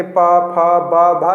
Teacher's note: तो देखेंगे ओठ आपस में सट रहे हैं, उनका उच्चारण स्थान क्या है, ओठ है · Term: ओष्ठ